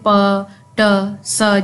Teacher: voiceless वो होंगे जिनके अंदर हवा रुकेगी लेकिन वाइब्रेशन नि करेगी